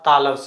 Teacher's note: तालब स क्योंकि इसका उच्चारण तालू से होता है इसलिए इसको बोला जाता है तालव्य स